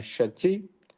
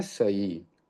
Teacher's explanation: तो शची का जब प्राकृत में ट्रांसलेशन करेंगे तो पहला जो श है उसका स बन जाएगा। तो तालव्य श का दंती स बना, और ची में से च का लोप हुआ, उसका आगे हमने सूत्र पढ़ा है कग च तद पय वाम प्रायो लुक।